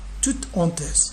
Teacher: le H de honteuse, c'est un H aspiré. Alors on le considère comme une consonne